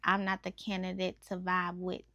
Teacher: he starts it with that iambic meter with the unstressed syllables and the loud syllables